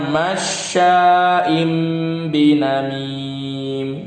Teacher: Nun sukun atau tanwinnya berubah jadi mim, dibaca mim, kemudian ditahan 2 atau 3 harokat.